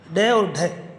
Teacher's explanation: उत्क्षिप्त, यानी कि जिह्वा की नोक उलटकर झटके के साथ तालु को छूकर हट जाती है